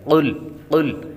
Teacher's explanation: قاف یہاں پر موٹا پڑھیں گے، قاف حروف مستعلیہ میں سے ہے اس لیے اس کو پر پڑھیں گے